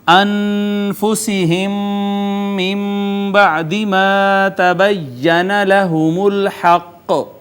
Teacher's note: میم ساکن کے بعد دوسری میم، ادغام شفوی